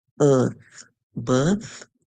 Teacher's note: T and H, tongue between our teeth